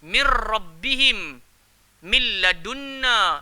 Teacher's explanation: Sebab apa dia bunyi kamil, sempurna? Sebab bunyi nun tu tak bunyi dah. Dia terus masuk dalam huruf selepasnya. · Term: idgham kamil